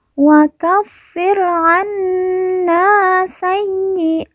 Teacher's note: na kita baca panjang 2 harokat karena di depannya terdapat alif yang merupakan tanda baca panjang 2 harokat. Wa kaffir anna sayyi'atina.